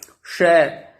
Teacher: ये दूसरा श है, ये मूर्धा भाग से, मूर्धन्य श बोला जाता है इसको